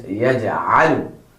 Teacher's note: The makhraj of a is from the center of your throat.